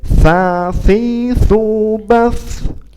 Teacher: tiga huruf itu sama-sama menempel ujung lidah kita menempel ke ujung gigi kita